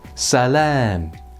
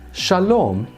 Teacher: in Hebrew on top of that, the long a vowel becomes a long o, so that this form ends up being shlam in Aramaic, but shalom in Hebrew.